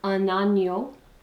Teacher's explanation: since agneau starts with a vowel, we're getting liaison with the N